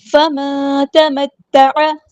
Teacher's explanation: نون ساکن کے بعد یہاں پہ چھپا دیں گے، اخفا ہو رہا ہے، اخفا کرتے ہوئے 2 کاؤنٹس 2 حرکات لمبا کرنا ہے